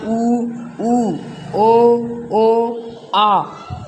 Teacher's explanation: बोलते समय जीभ का पिछला भाग काम में आता है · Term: पश्च स्वर